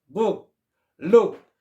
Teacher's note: 그 다음에 요렇게 생긴 거는 우라 그런데 우리가 약간 의에 비슷한 거, 우하고 의의 중간 발음이다 생각하면 되겠습니다